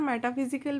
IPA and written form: ˌmɛtəˈfɪzɪkl (Metaphysical)